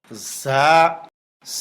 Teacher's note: লিক বা পানসার আওয়াজের মতো আওয়াজ হবে, 1 আলিফ পরিমাণ লম্বা হবে, বাংলায় অন্তস্থ জ আকার প্রকাশ হবে